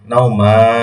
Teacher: সেক্ষেত্রে যদি দুই জবর থাকে তাহলে সেক্ষেত্রে আপনার শেষ দিকে ওয়াকফ করতে গেলে, অর্থাৎ ওয়াকফ মানে থামা, শেষ দিকে থামতে গেলে সেখানে এক আলিফ পরিমাণ টান হবে দুই জবরকে বাদ দিয়ে